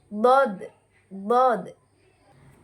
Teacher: tepi lidah bertemu dengan geraham kanan atau geraham kiri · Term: huruf dod